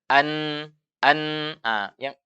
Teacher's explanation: Iya, makhraj aslinya nun adalah ujung lidah bertemu dengan langit-langit depan. An, an, yang merapat adalah ujung lidah dengan langit-langit. Tapi suara dari mana? Suara dari hidung.